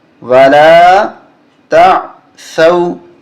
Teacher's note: ثا پہ زبان باہر نکلے گی